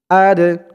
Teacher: এই দালটা কলকলার হরফ ধাক্কা দিয়ে পড়তে হবে